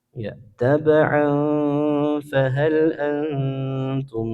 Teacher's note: Kalau kita baca bersambung maka hukumnya ikhfa. Dibaca samar dan dengung.